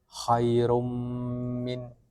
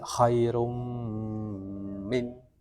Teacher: Mim dengan guna yang dipanjangkan